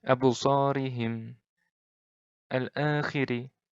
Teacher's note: Ri-nya ini pendek. Ri-nya ini tipis. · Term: ro' tarkik